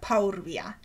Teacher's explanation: the U which precedes the R is epenthetic. It is anticipated from the W which follows the R. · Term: U epenthesis